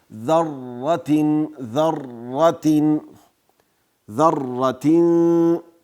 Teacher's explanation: تکریر صفت په دې معنی چې را په خپل مخرج کې مکرره تلفظ نسی، دا اشتباه ده، غلطي ده.